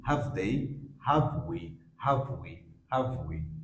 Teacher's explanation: strong সাউন্ডে হ্যাভ হ্যাভ, but উইক sound হয় হাভ হাভ আভ